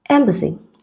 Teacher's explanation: Letter A in embassy is the schwa sound